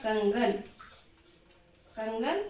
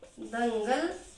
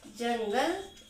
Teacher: अनुस्वार जब हम उच्चारण करते हैं तो हमारा ये अनुस्वार नाक से उच्चारण होती है